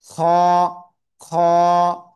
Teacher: এই খ অক্ষরটা আসলে উচ্চারণ হবে গলার শেষ ভাগ থেকে মোটা আওয়াজে